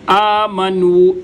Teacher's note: نو کو ادا کرتے ہوئے آواز منہ میں رہنی چاہیے، ناک میں نہیں جانی چاہیے۔